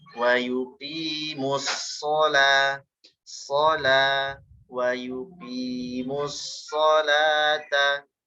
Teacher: Dari mu langsung masuk ke sod karena ada tasydid.